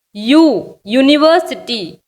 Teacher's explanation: இதில் யூ அப்படிங்கிற சவுண்டு தான் வருது, ஊ சவுண்டு வரல.